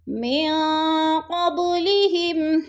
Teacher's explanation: نون ساکن کے بعد قوف حروف اخفا میں سے آ گیا ہے تو ادھر اخفا کریں گے، آواز کو ناک میں چھپا کر پڑھیں گے ، قبلہم قب با ساکن ہے اور حروف قلقلہ میں سے